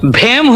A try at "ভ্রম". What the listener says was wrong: হেম নয়, ভ্রম, এটাতেও রফলা লাগবে।